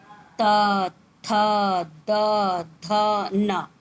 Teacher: इसके बोलने का स्थान है दंत, यानी दांत को स्पर्श करेगा ये जगह। त, देखिए दांत छू रहा है।